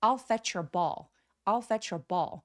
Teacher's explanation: 여기서 thatch 할 때 ch는 입술을 뚝내밀어 주시고요. 바로 뒷따라오는 your 같은 경우는 모음이라고 봅니다. 그래서 fetchure라고 연결해 주세요